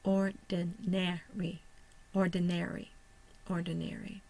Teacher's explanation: The schwa will be the second syllable, and the primary stressor is on the first syllable. The second stressor or secondary stressor is on the third syllable.